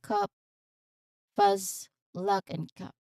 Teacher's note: It's short, it's relaxed and central vowel. So meaning your tongue here is in a neutral position. So think of it's the sound like in cup, fuzz, luck, and cup.